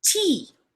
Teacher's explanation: The lips are spread and the sound is long. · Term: long E sound